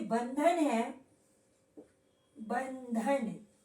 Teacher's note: बंधन जो है इसके बाद ध आया है, यानी कि त वर्ग का पंचमाक्षर है। बंधन को हम लोग इस प्रकार से भी लिख सकते हैं।